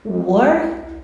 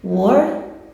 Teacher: Se você não sentir as suas cordas vocais vibrando, é porque não tem som. Então, no caso do K, work, não tem som, porque não vibra aqui, minhas cordas vocais, elas não vibram. Então, o K não tem som. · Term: voiceless